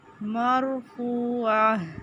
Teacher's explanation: مرفوعہ عین وسط حلق سے فو واو مدہ واو ساکن سے پہلے پیش